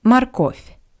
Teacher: the first o is unstressed that's why it sounds like ah